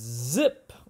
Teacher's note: the tip of the tongue is high and behind the top teeth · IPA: /z/